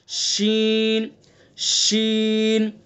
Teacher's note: شین کا مخرج ہے جو جیم کا مخرج ہے, زبان کا بیچ اور اس کے مقابل اوپر کا تالو